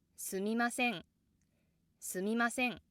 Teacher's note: Se has the accent and it causes the downstep.